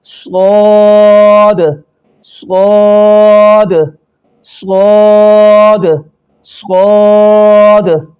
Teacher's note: اس کو پر پڑھا جائے گا یعنی موٹا پڑھا جائے گا اور ایک الف سے زیادہ کھینچیں گے، صاد، صاد، تھوڑا سا منہ گول کریں گے تو یہ لفظ نکل آئے گا، صاد، صاد، صاد، صاد۔